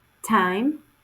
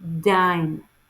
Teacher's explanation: Both are alveolar stop phonemes, but t is a voiceless and d is a voiced.